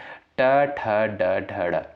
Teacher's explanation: ट वर्ग के अंतर्गत जो भी वर्ड आपके आते हैं मूर्धा से उच्चारित होते हैं